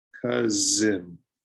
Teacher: the S is sometimes difficult because it makes a Z sound